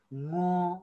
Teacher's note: वर्ण उच्चारणका क्रममा श्वास मुखबाट ननिस्किएर नाके ओडार हुँदै बाहिर निस्किएर उच्चारण हुने वर्ण चाहिँ के हो? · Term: नासिक्य वर्ण